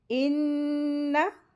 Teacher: नून मुशद्दद है, गुन्ना करके पढ़ेंगे, लेकिन ये ध्यान रखना है कि ज़बर को खींचेंगे नहीं, जल्दी पढ़ेंगे।